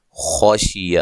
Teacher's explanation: خا کو موٹا ادا کرنا ہے، کسی کو لمبا نہیں کرنا